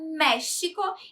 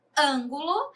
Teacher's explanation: o acento tônico está na antepenúltima sílaba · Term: proparoxítonas